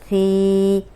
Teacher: अब सी जो है सामने के जो दो दांत हैं उनके किनारे पे ज़बान रख के अदा करेंगे, सीटी की आवाज़ नहीं आएगी।